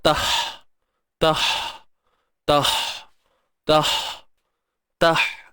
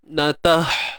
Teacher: Huruf ha pedas. Pastikan tengah kerongkong. Pedasnya kat dalam tau, bukan kat luar.